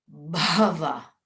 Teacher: it's a Maha Prana, but also the Ghosha sound. Ghosha meaning voiced, as opposed to Aghosha.